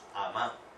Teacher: En Medellín nosotros no decimos mamá, decimos amá.